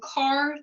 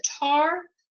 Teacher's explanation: a sound that is made in the back of the mouth is replaced with a sound that is made in the front of the mouth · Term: fronting